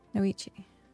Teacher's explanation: The T is a ch sound.